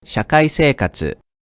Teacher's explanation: In a word longer than 3 mora, if the accent falls on a mora past the third one, then multiple mora will be at a higher pitch, until the accent is met. 社会生活、 Pitch falls after the accent on the fourth mora.